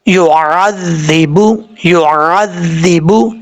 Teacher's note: عین کو کلیئر کرنا ہے، بعض اوقات لوگ عین کو کلیئر نہیں کرتے، عین کو حمزہ پڑھ جاتے ہیں